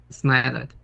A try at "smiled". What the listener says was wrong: Smiled. Smile. No suena la E. Entonces suena smiled. Smiled. Smiled. I don't say smile it. It's not smile it. It's smiled. De. Yeah, that's right. Smiled.